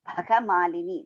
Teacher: the first Bha is Mahaprana, Ga is Alpa Prana.